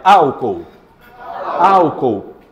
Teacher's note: vamos para as proparoxítonas a mais forte antepenúltima